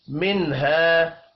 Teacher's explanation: नून साकिन के बाद हा है, यहाँ पर इजहार हल्की होगा, गुन्ना नहीं होगा